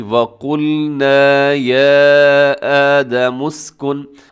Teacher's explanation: قوف اپنے موٹا پڑھنا ہے، باقی سب باریک ہیں، اور ساتھ الف مدہ ہے